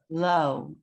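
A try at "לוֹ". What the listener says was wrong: good, low, perfect.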